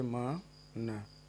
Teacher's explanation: Nasal cavity के माध्यम से वो वायु निकलेगी। तो जो ध्वनि का उच्चारण होगा, अनुनादन होगा, वो नासिका व्यंजन का अनुनादन होगा